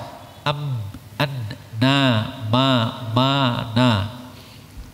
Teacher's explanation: Rumusan sederhana, hanya mim dan nun yang boleh masuk ke hidung, terjadi gunnah nasal sengau